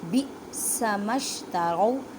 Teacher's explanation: حمزہ کے پر جزم ہے، اب حمزہ کو جھٹکا دے کے پڑھنا ہے